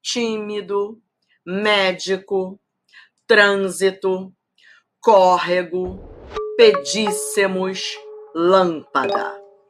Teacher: Todas proparoxítonas, todas têm a antepenúltima sílaba tônica, então todas recebem acento.